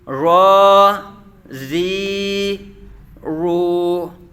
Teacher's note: را پر کھڑا زبر ہے تو اس کو پر پڑھا جائے گا، الٹا پیش ہے تو پر پڑھا جائے گا، جبکہ کھڑا زیر ہے تو یہ باریک پڑھا جائے گا۔